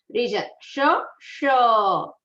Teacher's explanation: There are 2 shs. One sh coming from your palate region, then second sh is coming from the retroflex region.